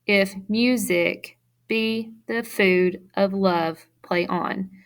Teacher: So mu, out of music, be, food, love, and on are the stressed syllables, creating iambic pentameter.